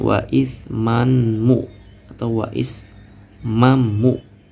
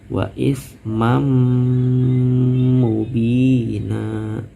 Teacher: Jadi tanwinnya dimasukin ke tasjid, lalu tasjid pas baca tasjid ditahan dulu, lamain di sini dulu, lalu kalau udah lamain 2 harokat baru deh baca ke huruf mu-nya gitu.